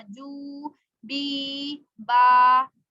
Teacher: हरूफ मद्दा को एक अलिफ यानी 2 हरकात के बराबर खींचकर पढ़ा जाएगा।